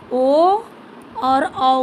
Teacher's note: ओ और औ का उच्चारण स्थान कंठोष्ठ है, यानी कंठ और ओष्ठ।